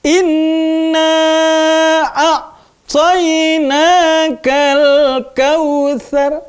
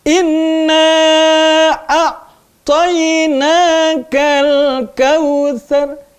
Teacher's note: Ujung lidahnya ada di antara dua gigi.